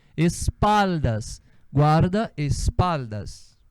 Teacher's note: O som do L vai lá, a língua vai lá no céu da boca.